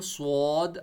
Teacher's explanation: سواد کو موٹا پڑھنا ہے، منہ کو گول کیا، سواد، اور سین کی آواز نکالنی ہے اپنے، سین وسل نہیں، سواد موٹا پڑھنا ہے.